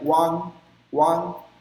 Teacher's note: O A-N-G não fecha a boca, não permite a boca fechar